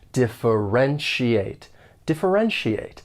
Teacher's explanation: When pronouncing this verb, there are five syllables and the stress is on that third syllable